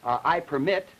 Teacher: in I permit, where the primary stress is on the second syllable, this turns it into a verb